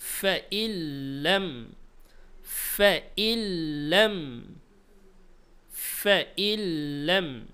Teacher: জজম এবং তাসদিদ পাশাপাশি থাকলে তাসদিদকে পড়তে হবে, তাসদিদকে প্রাধান্য দিতে হবে। এই জন্য আমরা নুনকে এখানে উচ্চারণে আনবো না।